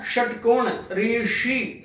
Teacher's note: ये मूर्धन्य श है जो मूर्धा की सहायता से बोला जाता है